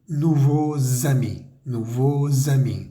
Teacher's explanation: Entonces la X va a sonar algo así como z, nouveaux amis, nouveaux amis. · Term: conexión sonora